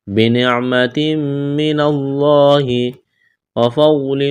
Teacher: تنوین کے بعد میم ہے، یہاں پر ادغام کریں گے، غنہ کریں گے، آواز ناک میں چھپائیں گے. لفظ اللہ کے نام سے پہلے زبر ہے، لفظ اللہ کے نام کو موٹا کرنا ہے.